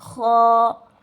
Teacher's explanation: ख पढ़ते वक्त एक किस्म की जो है हमारे गले में खराज होती है। देखिए ख ऐसे खराज होनी ही चाहिए और इसे हमेशा पुर पढ़ना चाहिए क्योंकि ये हुरफे मुस्तालिया में आता है।